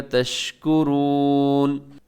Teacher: اس میں واو مدہ ہے، کھینچ کے اس کو پڑھیے گا